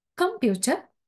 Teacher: the primary stress is on pew, and also com and ter are weak stress